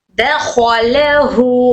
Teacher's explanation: खो हर्फ इस्तिअला वाला हर्फ है, तो मोटा पढ़ेंगे। दखलहु, बाकी सब लाइट।